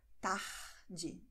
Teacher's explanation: R vor Konsonant, in der Mitte des Wortes, in vielen Regionen von Brasilien wird eher als [h] ausgesprochen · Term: H-Laut